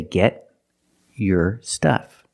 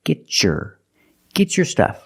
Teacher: if I separate I can say get your stuff but because I have a t before a y making the Y sound I can change the T to a chch sound like chicken